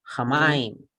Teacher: Se duplica el sonido de la mem porque tiene un Dares.